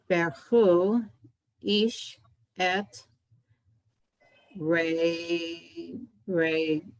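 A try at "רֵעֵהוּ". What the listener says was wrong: Re'ehu, there's a vowel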